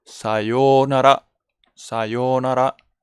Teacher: Entonces, pues quiero poner, porque aquí la pronunciación es bajo, el sa se pronuncia bajito y luego el resto se pronuncia alto